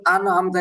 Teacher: হালকা স্পষ্ট করে নুন সাকিনটাকে পড়তে হবে